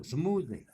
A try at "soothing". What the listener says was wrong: Soothing. Yeah, there's no M. Soothing. Yeah, soothing.